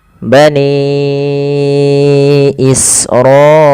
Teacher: Kalau pada satu kata kita namakan dengan mad wajib muttasil, maka kita harus panjangkan dulu panjangnya 4 harokat dan tidak boleh kurang